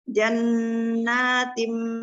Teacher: Jannatim tim digunakan didengungkan ke hidung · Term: hunah